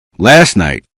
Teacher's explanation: Last night on the page, you can see the T at the end of last and you may expect to hear it clearly, but the T is placed between the S sound and the N sound, which creates a difficult sequence for the mouth. Many speakers make the tea very weak.